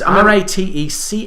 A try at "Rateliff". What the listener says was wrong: No, there's no C. No C in there. I'm guessing there's probably a Ratcliffe at some point in his family's.